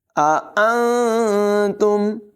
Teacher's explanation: نون کی آواز کو ظاہر نہیں کریں گے، اخفا کریں گے، یعنی ناک میں چھپا کر پڑھیں گے